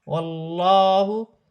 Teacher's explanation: اللہ کی لام سے پہلے زبر ہے، اللہ کی لام موٹی پڑی جائے گی